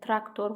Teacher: İka vurğu qəbul etmir, leksika ikadan əvvəldədir. Tor vurğu qəbul etmir, traktor vurğu tordan əvvəldədir. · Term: heca vurğusu